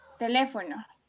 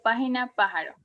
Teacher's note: Son aquellas cuya sílaba tónica es la antepenúltima. Este tipo de palabras siempre llevan la tilde. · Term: palabras esdrújulas